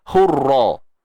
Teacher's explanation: Terangkat pangkal lidah, tebal. Hurra. Kita tak mengangkat pangkal lidah, hurra.